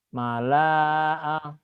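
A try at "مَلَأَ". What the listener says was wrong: Salah. Kan gak ada yang panjang, pemanjang. Mala'a. Mala'a.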